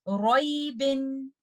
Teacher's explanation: Letter रॉ को आप तफखीम के साथ पढ़ेंगे रॉई बिन। और अगर आपने इस लफ्ज पे स्टॉप करना है तो आप लेटर ब पे फलकला कुबरा के साथ स्टॉप करेंगे रॉइब।